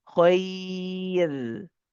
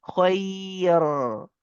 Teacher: In this case, you will make the ra light if you're stopping.